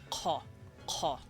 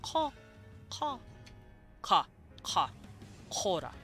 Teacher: this symbol, the Q symbol, is actually a K noise, but pushed way in the back of the throat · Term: Q sound